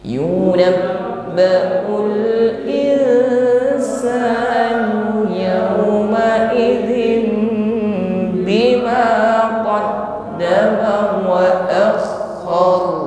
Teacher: Kita menggetarkan huruf ro dengan getaran yang kuat.